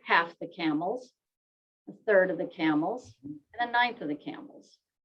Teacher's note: we have a rise, fall, rise, fall, rise, fall